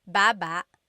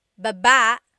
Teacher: Emphasis is on the first syllable, baba. Then there's baba. Emphasis is on the second syllable.